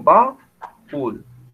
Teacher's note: El acento está en la última sílaba, es una palabra aguda.